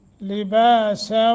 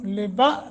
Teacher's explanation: جھٹکا نہیں دینا بلکہ با اس پہ 1 سیکنڈ کی مد ہوگی